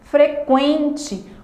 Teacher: Quase não dá para perceber o U na pronúncia dessa palavra.